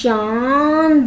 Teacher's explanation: ऐसे शब्दों का उच्चारण करते समय हवा मुंह और नाक दोनों से बाहर निकल रही है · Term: अनुनासिक